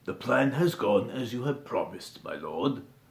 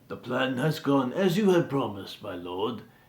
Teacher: my Lord what I'm doing is I'm actually just going lower I'm starting at a low register and then I'm going lower uh to end because if you go higher the plan has gone as you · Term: ending on a low